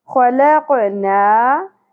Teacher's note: خا اور قاف دونوں حروف مستعلیہ میں سے ہیں، پر ہیں، ہیوی لیٹرز ہیں، اس لیے زبان کی جڑ کو اوپر تالو کی طرف اٹھاتے ہوئے ہم ان کو پر کر لیں گے